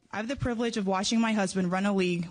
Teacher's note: You can hear her a little breathy, a little nervous.